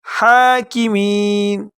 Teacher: ہا کو گلے کے شروع سے ادا کریں گے اور کاف کو باریک پڑھیں گے۔